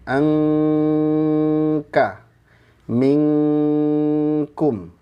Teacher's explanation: ciri-cirinya suaranya full lewat hidung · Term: ikhfanya terkuat